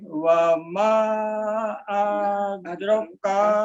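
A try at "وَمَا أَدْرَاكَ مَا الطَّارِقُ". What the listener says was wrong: Di A-nya jangan dipanjangin Pak. Di A-nya jangan dipanjangin. Adraka langsung.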